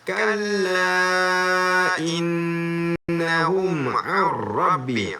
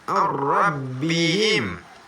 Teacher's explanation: Dibaca dengan memasukkan bunyi tanwin dalam ra, disertai tanpa dengung. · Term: idgham bila ghunnah